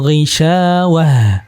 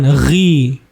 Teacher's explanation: Nggak ada suara seraknya karena sifatnya dia jahar.